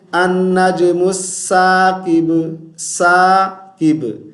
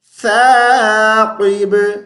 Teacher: سا پہ زبان کو باہر نکالیں گے، دونوں دانتوں کے درمیان میں رکھیں گے